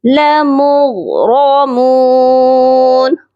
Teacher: غین کو بھی موٹا کر کے پڑھا جائے گا اور را کو بھی موٹا کر کے پڑھا جائے گا